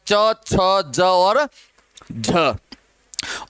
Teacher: स्पर्श संघर्षी में च वर्ग के 4 प्रथम अक्षर हैं, च छ ज और झ